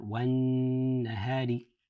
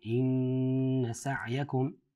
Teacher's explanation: give a strong nasal sound and hold that nasal sound for 2 counts